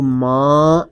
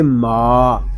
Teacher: میم الف زبر ما، میم کو ہم ایک الف تک کھینچ کر پڑھیں گے کیونکہ یہاں پہ الف مدہ ہو رہا ہے۔ اس میم کو جب ہم ادا کریں گے تو کوشش کیجئے کہ اس کی آواز ناک میں نہ جائے، اس کو ماں اس طرح نہیں پڑھیں گے، اس کو پڑھیں گے ماں۔